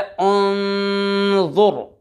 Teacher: उन्ज़ुर हमज़ा नून पेश उन, ज़ा, रा पेश ज़ुर। उन्ज़ुर नून साकिन के बाद ज़ा हुरूफ़ इख्फ़ा में से आ रहा है, गुन्ना करेंगे, गुन्ना करके पढ़ेंगे। ज़ा हुरूफ़ मुसालिया में से भी है, पुर पढ़ेंगे यानी मोटा करके।